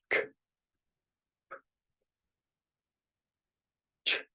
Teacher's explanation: So notice that all of these words are, excuse me, all of these sounds come from my mouth and usually my lips, like the front part of my mouth right here. There is no chance for a voice or a vibration coming from my throat · These sounds come from my mouth, not my throat. So these are unvoiced sounds.